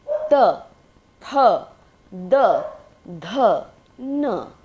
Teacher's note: दंत व्यंजन होते हैं त वर्ग के व्यंजन, जिसमें दांतों की भूमिका होती है इसके उच्चारण में।